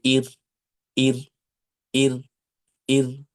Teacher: কারণ যে যখনই আপনার জিহবা কাপবে তখন কিন্তু র একটার পরিবর্তে দুইটা উচ্চারণ হয়ে যাবে। যদি দুইবার কাঁপে তাহলে দুইবার উচ্চারণ হয়ে যাবে।